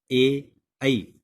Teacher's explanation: ए ऐ इनका उच्चारण स्थल कंठ और तालु दोनों के मेल से होता है, इसलिए इनको बोलते हैं कंठ तालु यानी कंठ तालव्य ध्वनि।